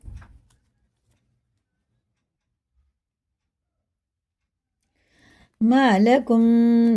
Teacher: میم ساکن کے بعد میم ہے، تو یہ ہمیں غنہ کر کے پڑھنا، یہ ہے ادغام شفی، ادغام شفی بولتے ہیں اس کو، اور غنہ کر کے اس کو پڑھنا، تو جب بھی میم ساکن کے بعد میم آئے۔